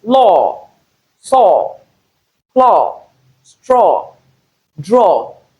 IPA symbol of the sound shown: ɔː